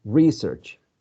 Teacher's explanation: some people have placed the stress on the first syllable to use it as a noun